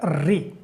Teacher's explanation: मूर्धा से यानी मूर्धन्य, मूर्धन्य जो स्वर होते हैं वो होता है री। री को जब आप बोलते हैं तो र जो है ऊपर जो जीभ पलट करके फिर नीचे आती है तो वो मूर्धा कहलाती है।